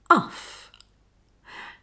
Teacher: the uff sound is a combination of the short vowel sound ah and the unvoiced sound f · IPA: ʌf